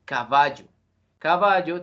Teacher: la penúltima un ejemplo de palabras graves es la palabra caballo caballo tiene acento prosódico en la penúltima sílaba